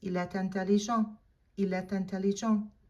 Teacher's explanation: We would say il est intelligent. Make sure that you do the liaison, because eh ends in a silent T, and intelligent begins with a vowel. You're gonna lace them together and you're gonna pronounce that final T.